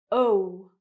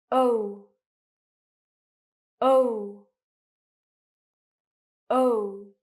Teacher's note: as you can see, my mouth is quite round, it moves, and it becomes smaller. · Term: diphthong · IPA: /əʊ/